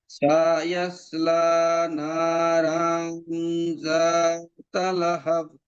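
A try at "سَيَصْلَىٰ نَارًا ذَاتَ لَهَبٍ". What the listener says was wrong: এই সায়ের মধ্যে মাদ করেন কেন? এটা তো প্রথমে দুটো সায়াসলা, এখানে মাদ হবে না।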